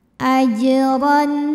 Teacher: ada huruf Jim yang sukunnya sukun asli dan ada di tengah bacaan maka dibacanya dipantulkan dengan pantulan yang kecil ajron huruf ro dibunyikan secara tafkhim karena rnya ini berbaris di